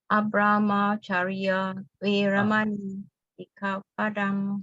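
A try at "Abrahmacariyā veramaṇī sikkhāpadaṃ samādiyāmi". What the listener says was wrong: great. Yeah, it's good.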